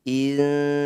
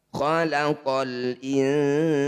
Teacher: Nah, ini disebut bacaan ikhfa, tepatnya yaitu ikhfa awsat. Cara bacanya bunyi nun sukun dengungkan 2 harokat. Ketika dengung lisan kita sudah bersiap di huruf sin.